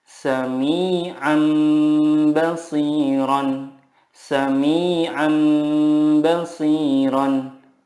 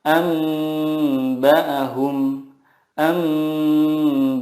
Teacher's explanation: Iqlab adalah nun sukun atau tanwin bertemu dengan huruf ba. Cara membacanya, mengganti nun sukun dengan mim sukun dan disertai gunnah 2-3 harokat.